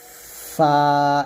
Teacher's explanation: দাঁতের আগার সঙ্গে লাগিয়ে জাল ফা উচ্চারণ করবেন 14 নং মাখরাজ নিচের ঠোঁটের পেট সামনের উপরে দুই দাঁতের আগার সঙ্গে লাগিয়ে ফা স্বাভাবিকভাবে পাতলা করে আমরা উচ্চারণ করব ফা এভাবে অর্থাৎ উপরে দুই দাঁত উপরে যে দুইটা বড় দাঁত · এভাবে অর্থাৎ উপরে দুই দাঁত উপরে যে দুইটা বড় দাঁত আছে আমাদের ওই বড় দুই দাঁত নিচের ঠোঁটের পেটে লাগবে নিচের ঠোঁটের পেটে লাগিয়ে আমরা ফা টা উচ্চারণ করব ফা এভাবে